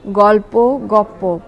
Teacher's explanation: পরবর্তী পয়ের প্রভাবে পূর্ববর্তী ল প হয়েছে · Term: সমীভবন